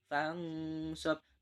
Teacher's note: Nun sukun bertemu dengan sod, maka wajib dibaca dengan samar. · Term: ikhfa